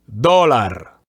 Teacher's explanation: even I can see that in the word dólar, the accent is on the first syllable.